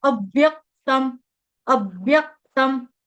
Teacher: ठीक है, उसके बाद अव्यक्तम, अव्यक्तम, यहाँ पे त के ऊपर अनुस्वार, अनुस्वार का उच्चारण हलंत म से